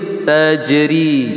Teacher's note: Tajri jim sukun qalqalah sughra, kecil.